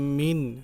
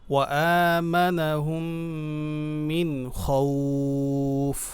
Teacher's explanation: নুন সাকিন একদম স্পষ্ট পড়ব, কারণ নুন সাকিনের পরে খ